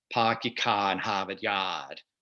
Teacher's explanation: It's non-rhotic. They're not pronouncing their R's.